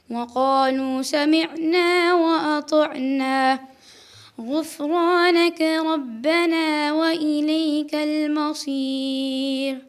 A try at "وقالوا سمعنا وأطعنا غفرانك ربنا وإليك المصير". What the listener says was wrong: One of the main things that I picked up was your kasras, mir, okay, also kutubi. It sounds like you're making like an air sound rather than an e sound. You've got to be very precise with the kasra.